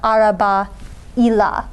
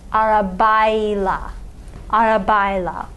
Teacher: we're attaching the suffix -la or -le to a word ending in a vowel, we're going to use the buffer consonant y